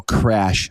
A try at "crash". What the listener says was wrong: your Canadian accent. It sounded like crush almost.